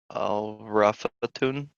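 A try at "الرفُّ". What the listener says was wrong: Here we don't have a tamarbuta, okay? So the word is rough, and you were right, we have alif lam at the beginning.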